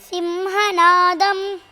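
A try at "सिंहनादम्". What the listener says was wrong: Don't say si. It is Simhanadam. Simhanadam. No, dham and all that. Alpa prana is alpa prana always. Simhanadam.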